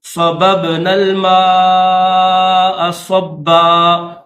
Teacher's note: سبب 2 با ہیں، صاد کے بعد پہلی جو با ہے اس کے اوپر زبر ہے، دوسری با ہے اس کے اوپر جزم ہے، یعنی دوسری با ساکن ہے، تو یہ حروف قلقلہ میں سے اس کو ظاہر کر کے پڑھیں گے۔